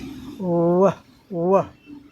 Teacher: पूरा वाइब्रेट करता है, हमारा वोकल कार्ड, हमारा स्वर तंत्र पूरा कंपन करता है